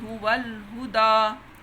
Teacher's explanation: اب یہ یا نہیں پڑھی جائے گی، صرف دال کے اوپر الف پڑھا جائے گا۔